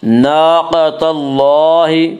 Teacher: الف مدہ کو ایک الف کے برابر کھینچ کر پڑھیں گے.